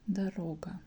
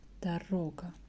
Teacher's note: Second O is stressed